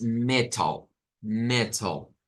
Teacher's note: no es que suene la L, solo la L en sí, sino que está sonando un schwa. Es decir, a esta se le llega a meter un schwa en esta parte.